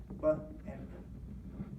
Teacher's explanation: it's got that tonal quality to it. You're vibrating your vocal folds. That's voicing.